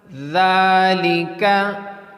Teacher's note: So next letters is zal and za. So pronounce the dal with thin and light sound.